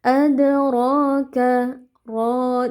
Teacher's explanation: Di sini kita baca tebal dengan mengangkat pangkal lidah karena rnya fathah. Lalu karena ada alif maksurah di depannya maka kita panjangkan dua harakat karena hukumnya mad thabi'i. · Ad ya di sini qalqalah sughro karena ada dal sukun yang e posisinya di tengah-tengah kata atau kalimat ya. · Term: qalqalah sughra